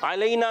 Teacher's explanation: अलैना में आइन क्लियर रखेंगे, हुर्फ़े लीन को नरमी से अदा करेंगे